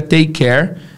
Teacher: Lembra que o último som é K e o primeiro som é K. Take care fica um K só